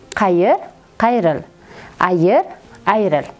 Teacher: Tovush tushishining to'rtinchi holati qayer, ayer kabi so'zlarimizga il qo'shimchasi qo'shilishi natijasida ushbu so'zlarimizning ikkinchi bo'g'inidagi i tovushi tushib qoladi